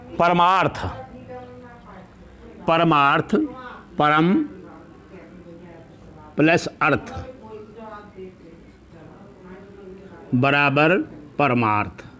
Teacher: अब यहां देखिए आप कि यहां क्या है, लघु आ, और यहां भी लघु आ है, लेकिन इन दोनों को मिलाने से हम सीख चुके हैं कि यहाँ भी आ है और यहाँ भी आ है, तो बड़ा आ मिलेगा